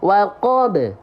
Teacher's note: kubra itu pantulannya kuat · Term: qqolah kubra